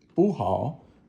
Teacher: So bu is also fourth tone. but it does change. Like if you have 不 好, it goes up. So like a second tone.